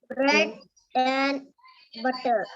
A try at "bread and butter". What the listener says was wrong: So instead of saying bread and butter, bread and butter. Fish and chips. In. We just say in instead of saying and. If you say bread and butter instead of saying bread and butter, which sounds more natural?